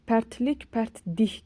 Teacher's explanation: Yəni l d-yə keçir, k da i-yə keçir.